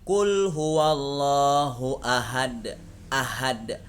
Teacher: Ha yang seharusnya dibaca tipis itu dibaca tebal. Ahad, maka itu bacaan yang salah.